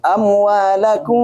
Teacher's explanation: Amwalakum itu dengungnya. Kira-kira 3 sampai 4 ketukan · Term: ikhfa syafawi